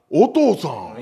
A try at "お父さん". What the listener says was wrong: い や 、 お 父 さ ん ね 、 イ ン ト ネ ー シ ョ ン お か し い 。